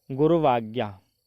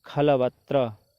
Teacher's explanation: अच परे है ही आज्ञा का आ है, तो यहाँ पर जो उ है उसका उच्चारण स्थान हमें देखना है। तो जो उ है उकार का उच्चारण स्थान ओष्ठ है, तो यहाँ पर वकार का स्थान भी दंत और ओष्ठ है।